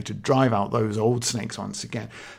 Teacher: because those is a stress it's just a long word you can feel the length of it